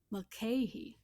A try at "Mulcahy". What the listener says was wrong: You got it right. You just did a short A instead of a long A.